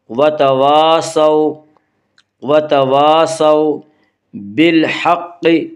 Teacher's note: قاف کو پر پڑھیں گے، قاف حروف مستعلیہ میں سے ہے، حروف مستعلیہ 7 ہیں جن کا مجموعہ خص ضغ تنقیز ہے جو ہمیشہ ہر حال میں پر پڑھے جاتے ہیں۔